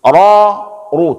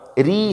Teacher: Nah, ini ra tebal karena kita tahu kalau huruf ra itu berbaris. Kalau barisnya fathah dan dhammah maka dibaca tebal. Kalau kasrah tipis. Ra ru tebal.